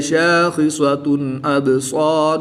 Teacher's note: دو پیش کی تنوین کے بعد حمزہ حروف حلقی میں سے ہے تو یہاں پر اظہار ہوگا یعنی غنہ نہیں کریں گے